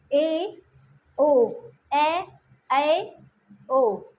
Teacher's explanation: अर्धविव्रत माने आधा मुंह खुला। आधा मुंह किसको खुला, ए ओ, आधा मुंह खुल रहा है, ए ओ, ए ओ, ए में तो थोड़ा बंद हुआ, देखो ए में थोड़ा और ज़्यादा खोलना पड़ेगा, बंद।